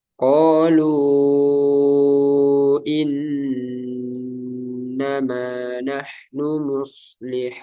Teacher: mad tabi'i bertemu hamzah tidak dalam satu kata. Panjangnya sama 4 atau 5 harokat. Sama dengan mad wajib, bedanya dia tidak dalam satu kata. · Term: mad jaiz munfasil